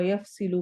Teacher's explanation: यफ में फा को वाज़े अदा करना है, स्वाद को मोटा करना है